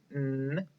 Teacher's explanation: That is a voiced consonant nasal sound.